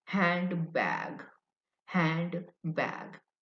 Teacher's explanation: So the N sound is changed. The N sound is N, N. But the native English speakers, they say M, the M sound, handbag.